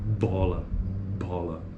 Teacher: dois articuladores o lado inferior um ativo do passivo mas também a maneira como isso ocorre é de maneira oclusiva Ou seja é uma espécie de explosão